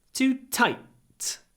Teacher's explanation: clipped before an unvoiced T